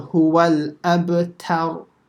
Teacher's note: the ta over here has to be empty mouth, and the ra will be slightly full mouth. So don't say tar, because that'd be a major mistake.